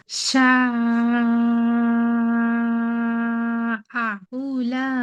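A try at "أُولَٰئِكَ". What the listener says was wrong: আচ্ছা আপু, এখানে উ টান হয়ে গেছে, তারপরে উলা ইকা, হামজাটার মধ্যে একটু টান হয়ে গেছে।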